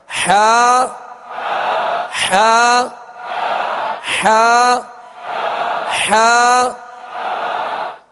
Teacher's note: اس کو وسط حلق سے بالکل ایزی ادا کرنا ہے، تکلف سے ادا نہیں کرنا. · حا وسط حلق سے، درمیان حلق سے